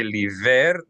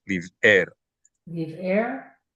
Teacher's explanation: You separated these two with a stop. We need a stop in the flow of air in our throat. That's called a glottal stop. So we need to be careful not to say liver, but live air with a break.